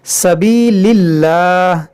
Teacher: जलाल से पहले ज़ेर है तो इसको हम बारीक पढ़ेंगे, इसको मोटा नहीं करेंगे